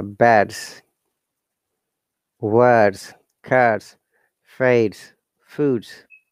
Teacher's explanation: Voice consonant with S sounds Z.